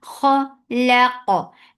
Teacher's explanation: Kha is heavy for fatha upon jaws. The sound is short and it has infitah too. · Qaf will be heavy and it has qalqala.